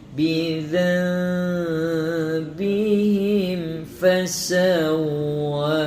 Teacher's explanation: Bidzam jumpa dengan iqlab, sama juga sebutan dia tidak merapatkan bibir, ringankan sebutan.